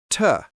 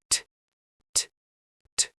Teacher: Say the letter T from the front, not the back. Not T, but a crisp, light push. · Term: forward energy